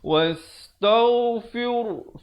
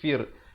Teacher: Ra di sini jadi nipis.